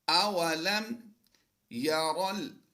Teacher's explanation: را کو اس لام کے ساتھ ملا دیں گے، یاد رہے یہ الف جو ہے یہ سائلنٹ ہو جائے گا۔